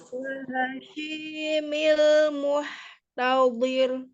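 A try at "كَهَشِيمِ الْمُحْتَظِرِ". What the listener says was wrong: Nah, hati-hati, muhnya jangan dimiringkan, jangan di muh, ada e-nya, muh tidak langsung. Muhtadhir, tadhir. Dia tipis roknya, tapi sifat huruf roknya jangan dihilangkan, dia tetap mengalir sebagian. Zir tetap.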